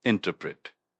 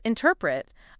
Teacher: That's I N T E R P R E T. And it's pronounced interpret with the emphasis on the second syllable